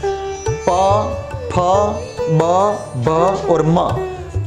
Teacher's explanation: और उसके बाद आता है ओष्ठ्य। ओष्ठ्य यानी लिप्स, हमारे होठ, होठ से बोले जाने वाले वर्ण